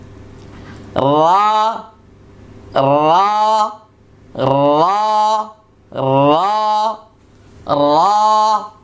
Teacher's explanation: জিহ্বার আগার পিঠ তার বরাবর উপরের তালুর সঙ্গে লাগিয়ে একটি হরফ উচ্চারিত হবে।